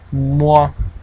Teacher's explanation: called nasal and what we're doing is we're closing the entire mouth and letting a little bit of air come out of the nose